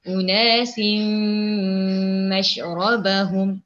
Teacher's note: Idgham ma'al gunnah artinya kita ni masukkan huruf itu dengan dengung.